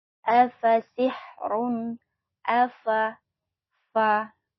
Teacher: Huruf fa itu ada sedikit udara yang keluar ya, fa. Karena huruf fa itu termasuk huruf hamas, maka ada sedikit udara yang mengalir ketika kita mengucapkan huruf fa.